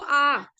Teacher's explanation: विवृत स्वर क्या होते हैं कि जब हम इनको उच्चारित करते जो हमारा मुख द्वार है ना मुख की शेप है वो पूरी खुलती है सिकुड़ी नहीं है पूरी की पूरी खुलती है